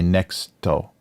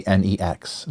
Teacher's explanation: if they try to use the English word next in things sometimes they'll take the T off